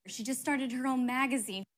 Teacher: star and mag the most stressed syllables there the other syllables said quickly